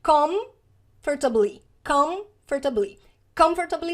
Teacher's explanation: E esse com, a nossa boca fecha, os lábios encontram aqui, ó, e o som ele fica meio fechado no final dessa primeira sílaba.